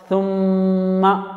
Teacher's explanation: تھوڑی دیر میم کی آواز کو گھمانا چاہیے، غنہ کرنا چاہیے